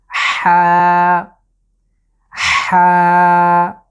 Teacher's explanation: এটার উচ্চারণ হলো ঠিক কণ্ঠের মাঝ বরাবর জায়গা থেকে, কণ্ঠকে খুব চাপ দিয়ে আমরা উচ্চারণ করব।